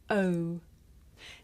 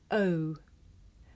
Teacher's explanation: this is a diphthong a double vowel sound the shape the mouth makes changes from the beginning of the sound to the end it's pronounced oh did you notice how my mouth changed shape